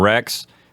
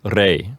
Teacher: No, the Spanish word for king would be rey. So here we see a softening of the X sound at the end of the word rex. It softens over time from rex and becomes the Spanish word rey.